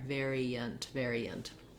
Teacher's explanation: So you're not going to see the y in the dictionary there, but it's just natural if I move from the E to the that I glide between the two and I get a little bit of a y in there. · we don't really say much of an A sound for that last syllable. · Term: schwa